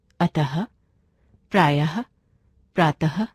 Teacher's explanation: इसका उच्चारण आधे ह के जैसा होता है। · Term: विसर्ग